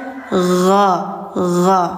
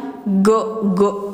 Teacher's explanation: Nah, suara ghnya mengalir. Gho gho. Jadi bukan go gitu ya.